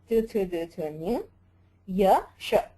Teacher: so talu is the sthana for ikara chavarga ya and sha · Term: तालु